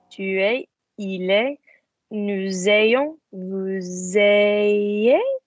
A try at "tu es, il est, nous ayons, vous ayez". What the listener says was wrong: That's it. Well done.